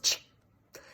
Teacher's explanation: the ch is actually a combination of a t and a sh, as in shush, silence, shop, right? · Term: affricates